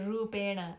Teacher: the dots indicate a cerebral sound where the tip of the tongue reaches to the roof of the mouth to produce the sound